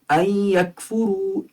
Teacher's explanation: ان یکفروا یا ادغام مع الغنہ ہے، ان یکفروا، کیونکہ نون ساکن کے بعد یا آ رہی ہے